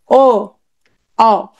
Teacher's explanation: জিভ সাথে সাথে পেছন দিকে চলে গেছে, একটু ভেতরের দিকে দেবে গেছে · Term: পশ্চাৎ স্বরধ্বনি